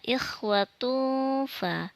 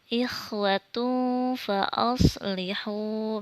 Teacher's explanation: Nih ada tanwin dhammah bertemu dengan huruf fa, dibacanya didengungkan. dan disebut dengan ikhfa.